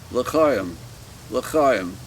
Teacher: And I always make it guttural with the ch